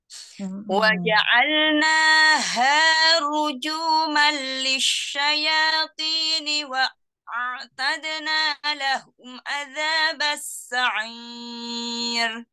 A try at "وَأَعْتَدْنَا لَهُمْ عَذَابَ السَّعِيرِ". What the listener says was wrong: Jangan ada jeda. Jangan wa jadi kayak ada titik. Wa langsung aja wa gitu.